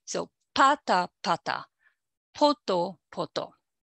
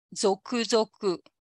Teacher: there is a significant pitch fall after the initial syllable. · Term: accent on the initial syllable